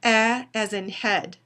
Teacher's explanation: it's a low mid-front LAX unrounded vowel